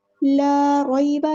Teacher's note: لا کو ہم نے لمبا کرنا ہے کیونکہ مد اصلی ہو رہی ہے، 2 حرکت یعنی 2 کاؤنٹس لمبا کرنا ہے